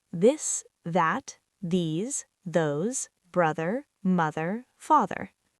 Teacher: For th in this, add voice. You should feel vibration. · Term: voiced